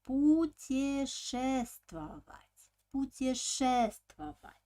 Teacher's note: Pay attention that in this verb, the suffix ova already doesn't have an accent